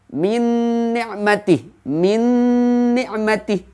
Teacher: Min ni'matih. Nun bertemu dengan nun. Nun di sana seakan-akan terdapat tasydid. Karena ini adalah merupakan hukum idgham atau bacaan idgham bi gunnah dengan menggunakan gunnah, maka bacaannya dengung.